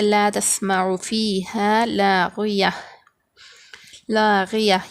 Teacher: تا کو جو ہے ہاں سے بدلیں گے ہاں پر جزم دیں گے پھر سانس توڑیں گے